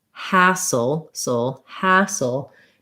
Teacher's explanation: you want the has part to be long and the ul part to be short